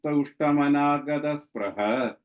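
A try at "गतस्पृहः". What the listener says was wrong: that's the 3rd line or whatever, 2nd line, first half, last word. Sprihaha. Because the visarga is also there. Sprihaha.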